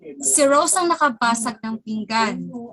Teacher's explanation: nandun po yung sa unang word ang stress